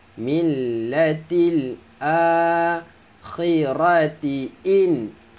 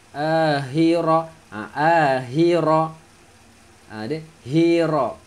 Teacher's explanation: Sebutan huruf kha, makhraj huruf kha dekat hujung kerongkong.